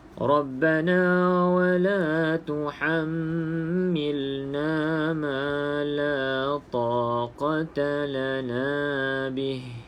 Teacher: bila ha di hujung, kita nak berhenti terus matikan ha ni